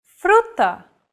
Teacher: focus on the second letter this Trill sound is done by lightly tapping the gum Ridge behind your upper teeth with the tip of your tongue